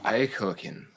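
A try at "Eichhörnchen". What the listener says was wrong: you're pretty close but you're kind of skipping a letter the N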